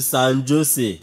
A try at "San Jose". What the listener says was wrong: It's pronounced San Jose. The letter J is pronounced as H in the United States.